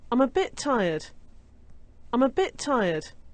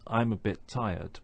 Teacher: our tongue is in the right position to pronounce t at the end of bit but we don't release that sound until we start to say tired